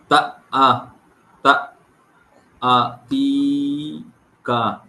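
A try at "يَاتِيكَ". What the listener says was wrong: তা আ নয়, ইয়া আ, এটা ইয়া নিচেই দু নোক্তা, ইয়া। ইয়া আতি। কা। ইয়া আ নয়, ইয়া আতি। কা। তা আ, তা আ ধাক্কা হবে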